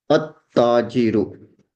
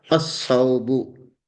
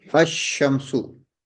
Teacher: When there is a ta and we attach alif lam, then we will not pronounce the lam of the alif and lam. At-tajiru. We will pronounce it at-tajiru. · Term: solar letters